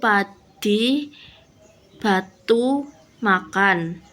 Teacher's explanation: Tempat artikulasi kedua bibir, keterangannya P tidak bersuara, B bersuara, M sengau. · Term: bilabial